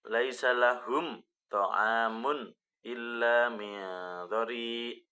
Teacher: mim mati bertemu dengan huruf th. Itu namanya adalah izhar syafawi dan harus dibaca jelas